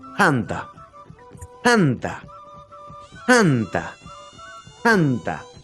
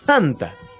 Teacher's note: es una t con soplido